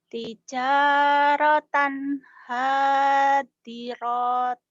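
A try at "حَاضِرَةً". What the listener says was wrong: Jadi pendek ya tijaratan hadirah hadirah enggak panjang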